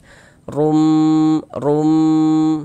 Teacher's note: Huruf ro kalau dia memiliki harokat dhammah atau dhammatain, maka huruf ro-nya kita baca tebal. Sehingganya pangkal lisan kita naik terangkat ke atas ketika kita mengucapkannya, tebalkan. Rum seperti itu.